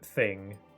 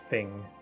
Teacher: I notice a lot of people especially a lot of people that I've met tend to not pronounce th's in words and instead uses f instead like in like I would say the word thing. Other people might say the word thing like with with an f instead of the th which I think is just like a dialect difference, you know.